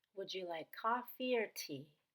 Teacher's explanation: look at choice questions they're really just lists with two items we're going to go up on the first item and down on the second item